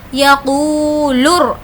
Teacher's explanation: واو جس پر جزم ہے اور اس سے پہلے پیش ہے تو اس کو کھینچ کر پڑھنا ہے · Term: واو مدہ